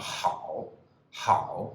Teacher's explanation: goes down quite low or quite deep and then just comes up a little bit · it goes quite deep quite dead low and then just a little rise at the end